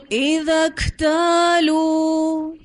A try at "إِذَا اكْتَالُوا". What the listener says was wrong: ایسا لگا کسی نے واو مدہ مس کیا ہے، ٹھیک ہے.